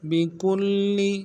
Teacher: وهو بكل با کے نیچے زیر ہے، نرم سے پڑھیں گے. کاف کو آگے لام کے ساتھ ملانا ہے، کل لام کے اوپر تشدید زور دیں گے